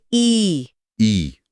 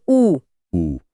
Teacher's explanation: ई बोलते हुए ऐसा लगा जैसे जीभ का अगला हिस्सा ऊपर तालू की तरफ उठ रहा है, और ऊ बोलते हुए जीभ पीछे की तरफ खिंच रही है। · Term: अग्र और पश्च स्वर